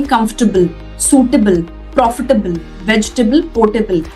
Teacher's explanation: कोई भी word जो table पे end होता है उसको हम table नहीं pronounce करते, उसको हम tibble pronounce करते हैं.